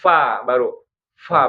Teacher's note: Ya, deras dia. Bahkan sebelum bunyi fa-nya itu udaranya dulu keluar ya.